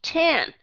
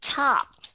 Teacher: các bạn sẽ thấy cái sự khác biệt là chúng ta thổi hơi mạnh ra